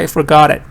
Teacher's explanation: You don't really hear that much of F and R and O. You just hear got very loudly.